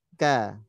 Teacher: Kaf huruf tipis berarti fathah tipis, tarik dibuka. Lidahnya rileks. Ya, pangkal lidahnya awalnya naik karena diletaknya di pangkal lidah, menyentuh langit-langit lunak dan keras.